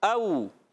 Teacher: یہاں پر بھی اظہار ہلکی کا قاعدہ ہوگا. او واو ساکن سے پہلے زبر واولین او, واو کو نرمی سے پڑھیں گے